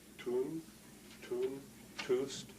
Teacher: you can feel how the tip of your tongue goes up behind your teeth, what's called the alveolar ridge